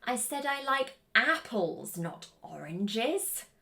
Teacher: So the last important feature is the contrast emphasis. And this has a fall rising intonation where we go down and we go back up again. We want the intonation to fall on the part of the sentence that is correcting or highlighting key information.